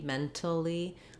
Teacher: This one I would typically probably use the T, mentally, and there's a little burst of air. It's an aspirated T in this word.